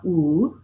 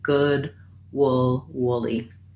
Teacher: Feel that lax, rounded, high vowel.